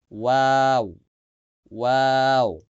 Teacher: দুই ঠোঁট গোল করে, দেখেন ওয়াও দুই ঠোঁট গোল করে সামান্য ফাঁকা রাখছে, এটা হচ্ছে ওয়াও, ঠোঁট গোল করে একদম গোল করতে হবে।